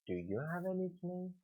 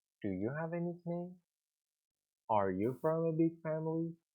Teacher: ask people yes no questions the intonation is rising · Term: rising intonation